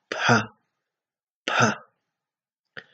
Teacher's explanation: Sonido consonántico bilabial aspirado.